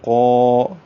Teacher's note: قاف کا جو الف ہے وہ بھی پر ہوگا. قا یہ نہیں ہے کہ قاف پر ہو اور الف پتلا ہو.